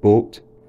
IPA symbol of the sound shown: bot